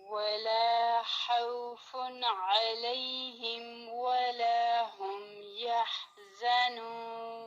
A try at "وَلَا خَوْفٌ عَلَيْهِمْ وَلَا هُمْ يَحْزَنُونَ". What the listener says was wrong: ایک چیز کریکٹ کر لیں، ولا خوف، خو ہیوی ہے، خاؤ نہیں پڑھنا، خاؤ نہیں، ہونٹوں کو پھیلا کے نہیں، خو زبان کی روٹ اٹھانی ہے.